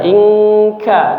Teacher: Langsung nempel. makhraj huruf kafnya, pangkal lidahnya langsung nempel ke apa namanya? Bagian langit-langit mulut yang lunak ya